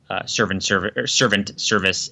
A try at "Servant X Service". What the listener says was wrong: Now you're calling it servant service. Do you not pronounce the X there?